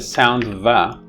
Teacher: the sound va which is the sound of the letter va is a voiced labiodental fricative